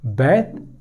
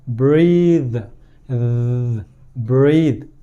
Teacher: breath, no vibration. breathe, breathe, vibration, voiceless, voiced.